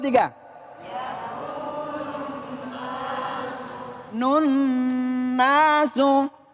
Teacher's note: Ketika nun bertasdid di sini adalah dibaca dengung.